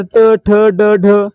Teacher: आपली जीभ आहे ती आपल्या टाळूला स्पर्श करते, म्हणजे काय, मूर्धन्य भागाला स्पर्श करते